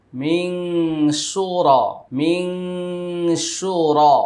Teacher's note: নুন সাকিনের পরে শিন, এটা ইকফা গুন্না।